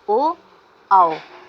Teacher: इसके अंतर्गत केवल स्वर वर्ण ही आते हैं, जैसे ओ, औ, और इसका सूत्र होता है उदात्तः कंठोष्ठम, अर्थात ओ, औ का उच्चारण स्थान कंठोष्ठ होता है।